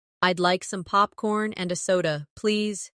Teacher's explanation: In natural rhythm and a becomes anna.